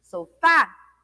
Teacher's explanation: Foi o fá, né? E o fá é a última sílaba da palavra. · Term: oxítona